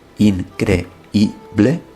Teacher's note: no hay diptongo entre esa i y la vocal e